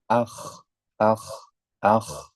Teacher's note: huruf k itu posisi lidah bagian pangkal akan juga terangkat